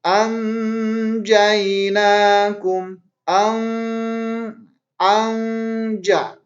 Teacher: Nun mati bertemu dengan jim. Ini dibaca harus dengung karena jim ini termasuk ke dalam huruf ikhfa.